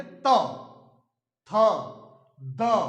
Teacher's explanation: दांतों में स्पर्श करेगी, दंत में जाकर स्पर्श करेगी। तो ऐसे वर्ण जो बोलते समय हमारी जीवा दांतों में जाकर टकराए, तो ऐसे वर्णों को दंत व्यंजन कहा जाता है।